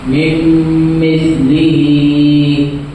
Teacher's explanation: نون ساکن کی آواز کو بعد والے حرف سے ملا کر گنہ اور اخفا کے ساتھ پڑھیں گے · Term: ادغام ناقص